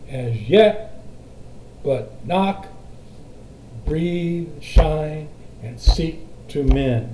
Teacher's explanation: To mend is unaccented, accented, and seek is unaccented, accented, but breathe is accented, shine is accented, knock is accented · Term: spondaic foot